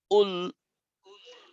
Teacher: লামকে একটু ধরতে হবে আর পেশকে ঠোঁট গোল করে পড়তে হবে।